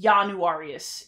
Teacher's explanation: this starts with an I, but it's in front of a vowel, so it's going to turn into kind of a y sound.